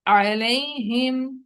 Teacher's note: ہائی جو نیچے والے حلق سے ادا ہوتی ہے